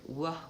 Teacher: for the W sound, w, where I make two, I use both my lips, it's bilabial.